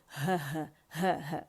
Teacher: اقصى الحل سے ہ ادا ہوگی